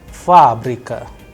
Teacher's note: the stress is on first A, that is why it is under stress, the sound of first A is higher than the rest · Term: udarenie